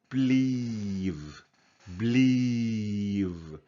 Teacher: second one so here we say pleaf with the f but with the v we say pleave believe so here we have a longer sound of the vowel